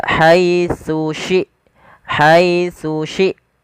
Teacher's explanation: Harusnya dia tsu huruf tsa yang pertama ujung lidah kita menempelkan dengan gigi atas